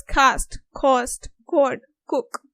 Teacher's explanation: K, but further back in the mouth, which is followed by a back vowel